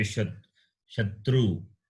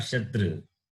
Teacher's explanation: You have to round your lips to say Shatru, not Shatra. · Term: labial